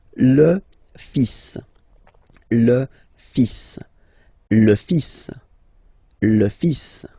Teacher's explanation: So it's le, and then even if you've got this L, well, basically you don't pronounce it, and then strangely you pronounce the final S.